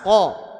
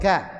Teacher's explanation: Aqsal lisan fauq itu tempatnya qof. Yang atas qo sedangkan kaf yang di bawah ka